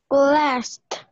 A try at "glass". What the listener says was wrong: Me marcaste una T al final. Me dijiste glassed. No lleva T, nada glass. Más es con la S.